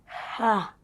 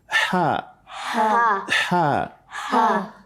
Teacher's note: It is a letter that comes from the middle of our throat. Wasatul halq, the middle of our throat.